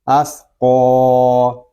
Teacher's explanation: قاف یہ حروف مستعلیہ میں سے ہے، اس کو پور یعنی موٹا پڑھیں گے، آگے الف مدہ ہو رہا ہے اور قاف کو ہم ایک الف تک کھینچ کر پڑھیں گے